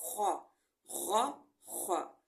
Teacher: خ میں خراٹے کی آواز پیدا کی جاتی ہے · غ اور خ حلق کے پہلے حصے سے ادا ہوتے ہیں جو کہ ہمارے منہ کی طرف ہے۔ غین میں تھوڑا غراٹے کی آواز ہوگی، غ، اور خ بھی موٹا حرف ہے، یہ دونوں موٹے حرف ہیں۔